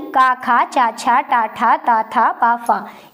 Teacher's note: इसके प्रथम दो वर्ण यानी का, खा, चा, छा, टा, ठा, ता, था, पा, फा, ये आपके अघोष के अंतर्गत आते हैं